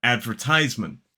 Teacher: in the American pronunciation, there is a secondary stress on the first syllable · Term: the R sound